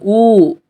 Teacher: அப்ப என்னது இதழ்கள் குவிகின்றது